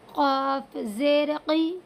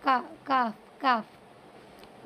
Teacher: بڑے قاف کو تو حلق سے نکالیں گے بالکل، اور چھوٹے کاف کو آگے سے